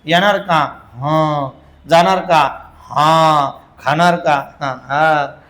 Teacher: अनुस्वार असतो पण उच्चार स्पष्ट नसतो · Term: ओझरता